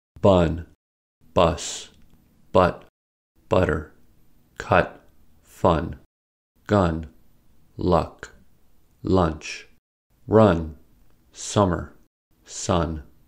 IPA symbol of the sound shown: ʌ